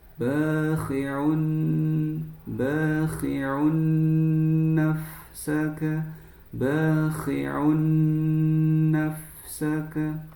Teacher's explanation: kita langsung masuk ke huruf nun dan dighunahkan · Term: Idgham bighunah